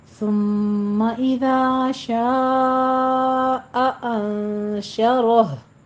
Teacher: شاء میں مد متصل واجب ہے، 5 کاؤنٹ کرنا ہے۔ آگے شاء نہیں کہنا، شاء حمزہ کی آواز آئے گی۔